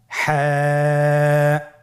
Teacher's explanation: হা হরফটি কীভাবে উচ্চারিত হবে? হা হরফটি উচ্চারিত হবে কণ্ঠনালীর মধ্যখান হতে। গলা চিপে ধরে আপনি উচ্চারণ করুন।